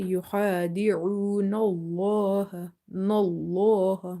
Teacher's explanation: Make this lam in the word Allah heavy because there is a fatha before it.